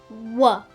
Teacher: First up we have the Labio-Velar Approximant